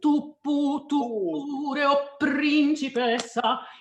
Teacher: tu itself, being a strong pronoun, asks that you double the next consonant after that. So tu pure o principessa. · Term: double the P